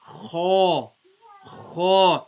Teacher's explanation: kha is a musta'liya letter, so that has to be read with a broader sound, deeper sound.